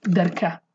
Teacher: In Hawleri they say darka. Okay, it's not ga, it's darka. And the a is short.